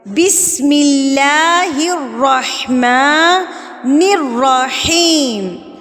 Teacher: ہا حلق والے حروف میں سے ہے اور را موٹی بھی ہوگی اور تشدید کے ساتھ مضبوطی کے ساتھ بھی اس کو پڑھیں گے